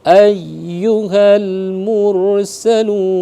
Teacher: ditekan seperti setelah itu dilemparkan huruf yu-nya. Ayyuhal mursalun, begitu dia. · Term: tasdid